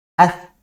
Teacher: Huruf tsa itu makhrajnya atau tempat keluarnya bunyinya itu dari ujung lidah. Hm. Bertemu dengan ujung gigi seri atas ya.